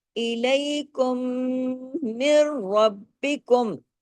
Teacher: میم پہ بڑا غنہ ہوگا کیونکہ ڈبل میم ہے نا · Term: اکمل غنہ